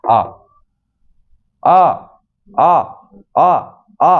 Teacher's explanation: पूरा खुला हुआ, पूरा का पूरा मुंह जो है वो खुल जाता है इसके उच्चारण करते समय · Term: विवृत